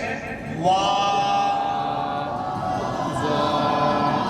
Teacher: और वाव के ताल्लुक से कहा गया कि होंठ के खाली हिस्से से, यानी दोनों होंठों को थोड़ा सा बंद करके जो बीच की खुली जगह है वहां से वाव